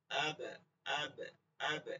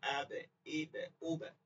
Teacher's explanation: বা ঠোঁটের ভিজা জায়গা চ্যাপটা হয়ে যাবে, লাগে যাবে